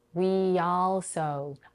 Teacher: I link these two words by inserting a y sound between them. This happens when a word ends on a tense E sound, like we in this case, and the next word starts with a vowel.